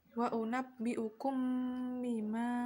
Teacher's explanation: Setelah itu bacaan wa unabbi'ukum bima, bacaan ikhfa syafawi, yaitu mim mati bertemu dengan ba. Cara membacanya dengan suara yang samar antara mim dan ba pada bibir, kemudian ditahan kira-kira 2 ketukan bersamaan mengeluarkan suara ikhfa dari pangkal hidung, bukan dari mulut.